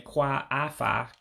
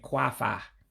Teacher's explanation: you're eliminating the second A. And so instead of saying Kwa-afọ, you're basically just saying Kwa-Fau for annual. And that little O, that O with the dot underneath, that's a diacritic.